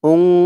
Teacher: অর্থাৎ নাকের ভিতরে লুকিয়ে গুন্নাহ করে পড়তে হবে। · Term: ইকফা গুন্নাহ